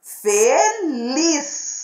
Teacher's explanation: Lis é a sílaba tônica. É aquela que pronunciamos com mais força.